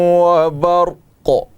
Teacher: چونکہ قاف ہے حروف قلقلہ میں سے ہے تو اس لیے یہاں پر قلقلہ بھی کریں گے